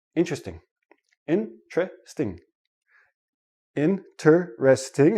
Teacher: when I actually say it naturally it becomes three syllables and the T and the r become like a CH